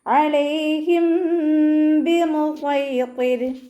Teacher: സ്വാദ് ഇസ്തിഅലാന്റെ ലെറ്ററാണ്, തഫ്ഹീം ചെയ്തിട്ട് ഉച്ചരിക്കുക. ത്വാഉം ഇസ്തിഅലാന്റെ ലെറ്ററാണ്, രണ്ടിനെയും തഫ്ഹീം ചെയ്തിട്ട് ഉച്ചരിക്കുക.